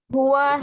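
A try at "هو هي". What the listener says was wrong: Ini huwa nih ya, dengan hiya, nggak ada yang panjang sedikit pun. Jadi kita baca huwa hiya. Tidak usah dipanjangkan, nggak usah dibaca huwa hiya, nggak ya.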